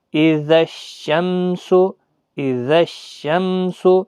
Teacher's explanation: پہلے اذا الشمس، دیکھیں یہ ال جو پہلے شمس کے پہلے جو ال ہے تو یہ نہیں پڑھا جا رہا ہے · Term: ادغام شمسی